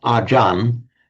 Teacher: The Thais often drop off the final syllable when they're pronouncing it in Thai. And when a word in Thai then ends in a r, they actually pronounce it, again, a peculiarity of Thai phonetics, as a n. So what is acharya in Sanskrit, acharya in Pali becomes, essentially the same word, becomes ajan in Thai.